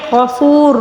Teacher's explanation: اچھا غفور، اب یہاں پر واو مدہ ہے، اس کو ایک الف کے برابر کھینچ کر پڑھیں گے. را کے اوپر پیش ہے غفور، را کو پر پڑھیں گے